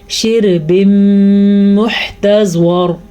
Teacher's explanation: یہاں پہ تنوین کے بعد میم آیا ہوا ہے، یہاں پہ ادغام بالغنہ کا قاعدہ بن رہا ہے